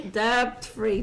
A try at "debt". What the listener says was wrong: I like how you pronounce the B in debt.